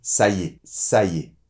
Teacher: quand on parle naturellement on va dire plutôt : « Ça y est ». Comme si le « y » avait une apostrophe avec « est ».